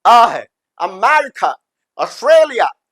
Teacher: वो लास्ट वाला जो ए है वो इंग्लिश में सिर्फ श्वा साउंड प्रोड्यूस करता है